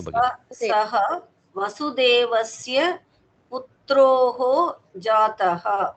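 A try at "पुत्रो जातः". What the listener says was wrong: Putro, there is no visarga. Putro Jataha. There is a visarga, but it has become a O sound here. That is called Uttva. Visargasya Uttvam.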